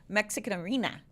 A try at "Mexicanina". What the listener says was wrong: It's not arena. It's Mexican Nina.